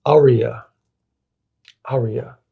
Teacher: consistently pronounced with the emphasis on the first syllable